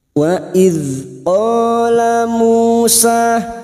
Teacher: Fathah diikuti alif, dua harokat kita panjangkan mat tabi'i.